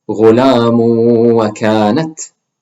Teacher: Drop the noon sound at the end of the tanween, merge it with the waw, and make a ghunna.